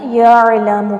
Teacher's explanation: یعلم یہاں پر عین پر جھٹکا نہیں دینا، یعلم کر کے نہیں پڑھنا، یعلم پڑھنا ہے. عین جو ہے وہ حلق سے نکلتا ہے تو نکالنے کی کوشش کریں